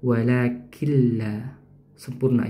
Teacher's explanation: Nah di situ ada nun sukun ya, walakin. Tapi karena bertemu dengan huruf lam, maka nunnya dileburkan atau dimasukkan ya, diidghamkan.